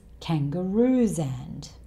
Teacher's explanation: And he doesn't say the 'd' sound at all. So 'and' becomes 'ən'.